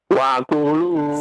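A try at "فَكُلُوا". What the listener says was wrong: Fa, bukan wa. Fa.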